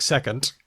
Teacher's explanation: D can sound like T in a word like second at the end